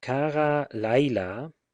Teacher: the tone is generally shifted back to the penultimate syllable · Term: retrogression of the tone